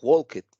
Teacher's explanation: es Ed pero en pronunciación suena como si fuera una t